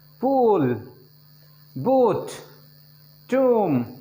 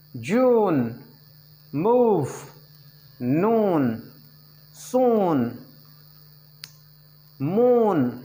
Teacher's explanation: Height of the tongue is nearly close. Part of the tongue which is highest, this is back, back ही सबसे ज़्यादा उठता है उसमें। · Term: ooh sound, vowel sound number 9